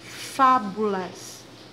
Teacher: Fábulas. A sílaba mais forte está no Fá. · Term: proparoxítonas